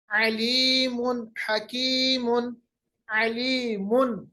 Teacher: नून की जाहिर हमने आवाज की, तनवीन की जाहिर हमने आवाज की, तो इस वक्त यहाँ पे भी इजहार हलकी।